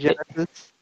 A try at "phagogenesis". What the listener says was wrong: no, the PH is an F sound.